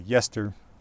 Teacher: you've got that unstressed E pronounced more or less as a schwa